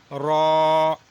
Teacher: یہ موٹا پڑھا جائے گا، یعنی کہ دونوں ہونٹوں کو گول کیا جائے گا